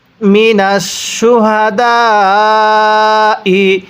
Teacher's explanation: এই দালের মধ্যে আমরা 4 আলিফ টান দিব